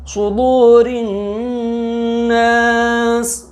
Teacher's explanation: را کے نیچے زیر ہے تو را باریک